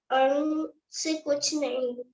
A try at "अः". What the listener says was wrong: नहीं अंग नहीं है वो, अह है, अह खाली। हाँ खाली उसको बोलते हैं अह खाली।